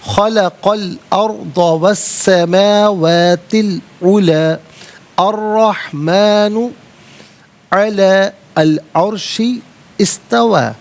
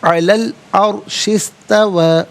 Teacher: را ساکن ما قبل حمزہ پر زبر، را ساکن کو پر کر کے پڑھیں گے